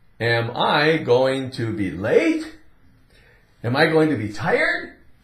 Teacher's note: we're going to rise up a little bit on that last word. We elevate that pitch of our voice a little bit